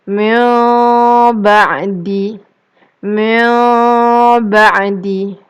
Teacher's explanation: Dia macam seakan-akan nun mahu masuk kepada bunyi ba. Tapi bibir tidak dirapatkan. Kalau kita rapatkan dia jadi mim ba. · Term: iqlab